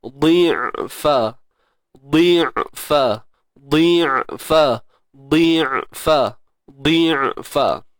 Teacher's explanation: Matikan ain. Kekalkan sifat tawassutnya.